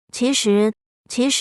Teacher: if you have two second tones in a row the first one will be a little bit higher than the second one